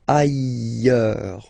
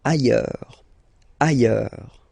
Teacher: final S not pronounced, and then you've got this y sound